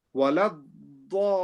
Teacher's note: In Walad Dallin, we have to make the dad long, and then we say lean.